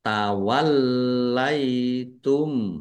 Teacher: Lamnya dibaca dobel ada tasdidnya ditekan dan ditahan biar tampak dobel